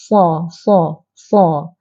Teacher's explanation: pangkal lidah kita sebahagian besar pangkal lidah kita terangkat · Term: tebal